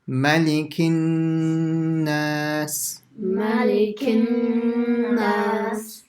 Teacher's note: it's just a nasal sound, isn't it? From the nose for duration of one alif or two harakas · What's the ghunna rule? That you have to keep it on the na for a few seconds